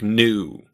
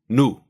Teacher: Again, this vowel is pretty much the same in both languages, but as we just mentioned with E, some dialects of English will use 2 vowels here, something like new, where Russian consistently will use just one pure U